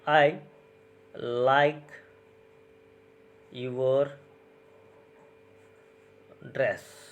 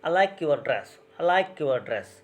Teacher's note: Here, I have given stress on like and dress. I haven't focused on these pronouns.